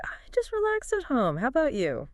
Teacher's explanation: that little rising intonation at the end